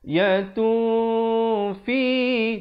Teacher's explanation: Disembunyikan tanwinnya ataupun nun itu di belakang fa dengan kadar dua harakat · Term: ikhfa